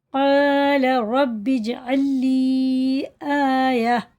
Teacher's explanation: یہ حرف مدہ ہے الف، یہ تھوڑا سا کھینچ کے پڑھیں گے، لام کو بالکل نہیں کھینچیں گے، نہ را کو کھینچیں گے